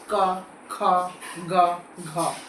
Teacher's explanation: व्यंजनों को उच्चारण करते समय जीभ का जो पिछला हिस्सा है, पीछे का हिस्सा है ना, वो हमारे कंठ को छूता है, यहाँ छूता है, तब ये आवाजें निकलती है। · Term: कंठे व्यंजन, कंठ व्यंजन